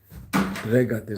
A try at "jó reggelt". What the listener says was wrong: Reggel? You just put the T there. Jó reggelt.